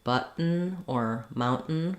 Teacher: We don't say button, mountain with a vowel for that letter O. We just say the N sound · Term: syllabic N